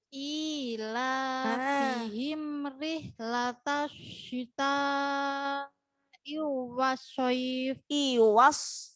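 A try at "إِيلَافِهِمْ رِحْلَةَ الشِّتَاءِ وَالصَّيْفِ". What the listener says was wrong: Iwas. Nah, jangan digabung. Iwas soif. Yang digabung itu hanya yang ada tasdidnya. Ila fihim sendiri-sendiri. Ila fihim latasyita iwas. Nah, i sama wanya enggak digabung. Iwaso, baru yang ada tasdidnya baru digabung. Iwasoif.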